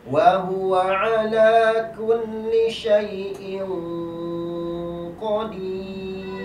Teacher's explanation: Karena hukumnya ikhfa, maka qafnya ditebalkan. Qaf keluar di pangkal lidah.